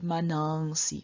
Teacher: in front of s the nasal does not appear as a full nasal but it appears as an anuswara